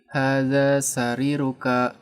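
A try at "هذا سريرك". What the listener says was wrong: Rinya diperjelas panjangnya sariruka gitu.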